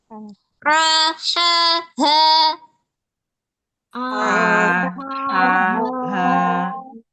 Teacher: harful ha itu letaknya di tengah tenggorokan ha tipsnya disempitin dulu rasakan sempit pada bagian tenggorokan a ha a ha tayib ha a ha ha a ha disempitin ha a ha ha a ra A a a ba dari bawah meluncur ke tengah ya.